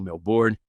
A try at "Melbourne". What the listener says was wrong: Você não pronuncia os R's. Melbourne.